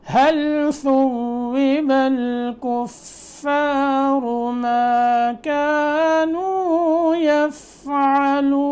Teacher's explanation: ہا کی ادائیگی آپ کو پتہ ہے، حلق کا بالکل آخری حصہ سینے کی طرف والا، ثوب الثا کی ادائیگی صحیح ہو، ثوب الكفار را موٹا، ما كانوا يفعلون۔